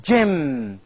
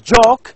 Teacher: in a case of pronouncing joke, we have d, j. This is a combination of d and j.